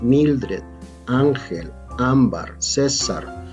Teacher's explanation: la sílaba tónica es la penúltima por lo tanto son palabras graves